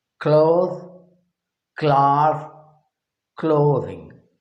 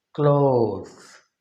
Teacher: the same letter O is pronounced for the word cloth as A, and plural clothes is pronounced with an O sound